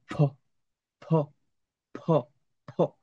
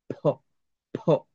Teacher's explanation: ফর সাথে একটা হ যোগ করবেন, একটু, একটু মহাপ্রাণ ধ্বনির মতো, একটু টান দিয়ে।